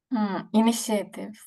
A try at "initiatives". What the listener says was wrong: I think you are trying to pronounce this a a yes yeah you don't pronounce the a so say initiative